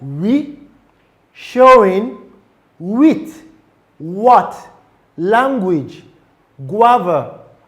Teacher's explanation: produced by bringing the lips closely together but not completely obstructing airflow creating a gliding or transitional sound.